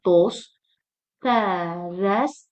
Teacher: ondan sonra samitlə başlayan şəkilçi gəldiyinə görə burdakı t düşəcək. tələffüzdə olacaq.